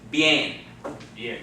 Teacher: So this word only has one syllable. And the I and the E sound are run together into one. So it's not bien, okay? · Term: diphthong